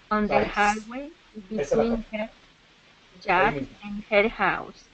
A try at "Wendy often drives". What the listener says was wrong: Esa es la parte. Cuando estás diciendo el verbo y no le estás diciendo la S. Solamente vamos a hacer las 3 primeras palabras. Wendy often drives.